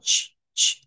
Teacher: Esta CH no es la CH que usted y yo conocemos, vean, no es la chachechi, sino que esto es algo que suena como ch, ch. Es un sonido más suave. Es un sonido que está en medio como de una SH y una CH, como que nos pusiéramos en medio de esos dos sonidos.